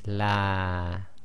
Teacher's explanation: the alif as we see here in the LA will not have its own sound on it it's helping to lengthen the sound before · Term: long vowel